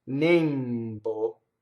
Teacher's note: This is a stressed E that's closed.